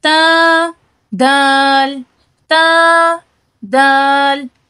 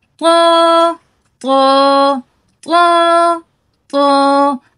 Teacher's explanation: تا اور دال یہ دونوں باریک ہیں، اور طو یہ موٹا ہے، لیکن ان کے نکلنے کی جگہ ایک ہی ہے۔